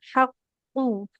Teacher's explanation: kalau ada qaf yang bertasydid kan double ya hurufnya. Berarti huruf qafnya dua. Pastikan dua-duanya tebal.